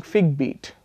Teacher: But what you have done is you've created a sound exchange. Both syllables, the first phonemes have gotten exchanged.